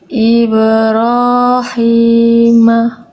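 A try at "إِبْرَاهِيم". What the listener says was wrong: Oke, hanya jangan jadi H kecil. Ya, itu masih itu H kecil ya. Ibrahim. Ya, ba, ro, ha.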